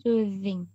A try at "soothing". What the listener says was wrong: Very soothing. Good.